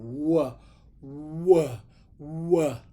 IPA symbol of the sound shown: w